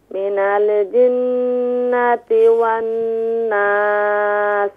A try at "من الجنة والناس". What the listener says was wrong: Don't do قلقلة من ال. من الجن